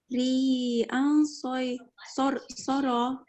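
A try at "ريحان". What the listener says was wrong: Okay, ha is there after ya. Ha. Ha. Rihan sarsara.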